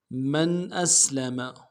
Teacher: بلى من أسلم، میم کو نون ساکن کے ساتھ ملانا ہے، نون ساکن میں اظہار ہوگا، حمزہ کو سین کے ساتھ ملانا ہے، سین کی سیٹی باریک ہوگی، لام کو نرم سے ادا کریں گے، میم کو نرم سے ادا کریں گے۔